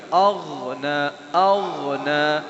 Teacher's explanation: اغ پر تھوڑا قلقلہ نہیں کرنا